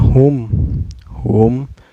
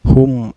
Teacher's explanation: cara bacanya mim sukun nya dibaca secara jelas ya Enggak boleh dengung dan gak boleh memantul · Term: izhar syafawi